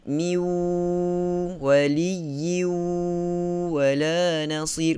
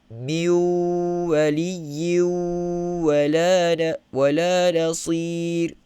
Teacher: Buktinya kita tutup hidung kita masih lagi boleh sebut dengan selesa. Bermakna kita menggunakan mulut sahaja, tidak menggunakan hidung. Tidak naik kepada khayshum. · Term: tanpa dengung